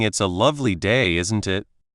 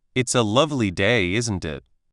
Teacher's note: You've worked on the rhythm and the slight upward lilt at the end.